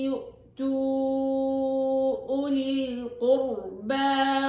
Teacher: يؤتوا بتمدوا طبعا في هنا مد منفصل، يؤتوا أولي القربى، أولي القربى الواو هنا عليها صفر مستدير لا أرفضها أبدا.